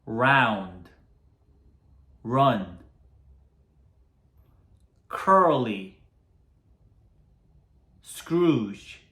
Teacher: 혀를 말면서 R, R. 그리고 혀는 중간에 떠 있어요. 입천장을 닿지 않아요.